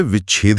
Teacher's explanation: जब कोई स्वर सीधे छ से टकराता है तो हमारा मुंह प्राकृतिक रूप से उस हवा को रोकने के लिए बीच में च की पोजीशन बना लेता है। बिना छ लगाए विभा और छेद को एक साथ तेजी से बोला ही नहीं जा सकता।